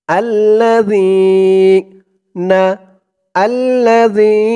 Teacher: এই জালের উচ্চারণটা একদম নরম পাতলা হবে জিহ্বার মাথা উপরের দাঁতের মাথার সাথে লাগবে